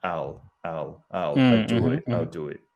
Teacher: a lot of native speakers actually omit the middle vowel and say almost like um al